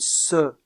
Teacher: alvéolaire ce et ze dans le cas de ces deux constrictives il y a un resserrement du passage de l'air au niveau des alvéoles avec la pointe de la langue en bas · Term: constrictives alvéolaire